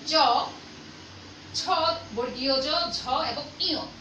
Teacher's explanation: এই চ, ছ, বর্গীয় জ, ঝ এবং ইয়, এই 5টা বর্ণ উচ্চারণ করার সময় আমাদের জিহ্বার মাঝখানের অংশটা, দাঁতের যে শক্ত অংশটা আছে, দাঁতের গোড়ার উপরের তালুর যে শক্ত অংশটা আছে, সেই জায়গাটায় আমরা স্পর্শ করি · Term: তালব্য বর্ণ